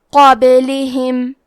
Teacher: من قابلہم، کلمت قابلہم میں حرف القاف کو موٹی آواز میں پڑھنا ہے، با پہ جزم ہے تو یہاں با کا حکم ہے قلقلہ تو ہم یہ حرف کو ہلاتے ہوئے یہ کلمہ کو پڑھیں گے۔ لام اور ہا کے نیچے زیر ہے تو ہمیں یہ دونوں زیر کو ظاہر کرنا ہے۔